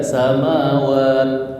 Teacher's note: Mat arid lisukun. Jadi panjangnya boleh pilih 2, 4 atau 6. Tadi saya bacakan agak 4 ya.